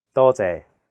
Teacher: the first character is in high flat tone first tone it means many and the second character is a low flat tone sixth tone